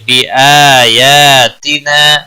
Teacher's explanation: بآیاتنا آ اور یا دونوں کے اوپر کھڑی زبر ہے ایک ایک الف کے برابر کھینچ کر پڑھیں گے